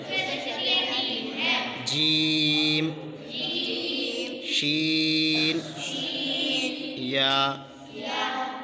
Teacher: زبان کے درمیان اور تالو کے درمیان سے ادا ہوتے ہیں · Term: حروف شجریہ